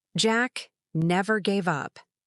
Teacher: the words never and up are stressed